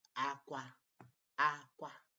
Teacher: you stress the first A and the last A with high tone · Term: high pattern